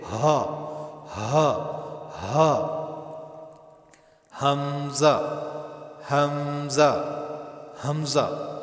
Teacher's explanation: ان دونوں کا مخرج جو ہے وہ گلے کا آخری حصہ جس کو اقصائے حلق کہتے ہیں یہاں سے ادا ہوتا ہے۔